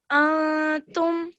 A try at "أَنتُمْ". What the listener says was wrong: Okay, so you have a slight, remember you have to stretch that slightly there as well.